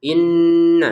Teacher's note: Nun bertasdid ini wajib didengungkan ya. Inna dua harakat saja.